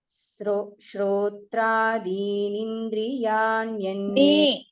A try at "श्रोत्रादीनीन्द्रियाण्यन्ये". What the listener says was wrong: Ni is dirgha.